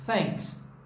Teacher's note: É thanks, ele não vibra. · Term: voiceless